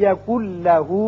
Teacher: نون ساکن کے بعد جب لام آ جائے تو وہاں ادغام تو ہوتا ہے لیکن غنہ نہیں ہوتا. اب نون نہیں پڑھا جائے گا، کاف کی آواز لام سے سیدھی ملے گی. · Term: ادغام بغیر غنہ